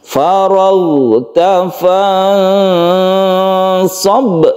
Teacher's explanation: ghain ini bukan memantul, jadi dia itu bukan qalqalah. Ini lemaskan saja, ghain ditaruh di atas tenggorokan ya, karena memang makhrajnya itu di al-halaq atau tenggorokan, sehingga membacanya itu rasakan di tenggorokan bagian atas. · Nun bertemu shad ini adalah ikhfa, ini panjangkan ya, panjangkan.